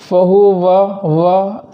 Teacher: تو واو کو ادا کرتے وقت ہونٹوں کو گول کریں گے